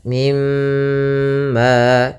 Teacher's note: tahan dulu suara mimnya dua harakat · cara membacanya yaitu tahan dulu suara mimnya 2 harakat, mimma. Kemudian pada lafal ma ada mad tabi'i lagi yaitu adanya fathah bertemu alif. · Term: ghunah, gunnah